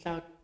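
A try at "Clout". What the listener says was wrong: No. That's cloud with a T. Cloud. This is cloud, cloud.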